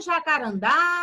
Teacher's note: Perceba que a última sílaba, ela teve um tom mais forte, ela veio mais forte na hora que você pronunciou ela. Então, ela vai ser acentuada na última sílaba.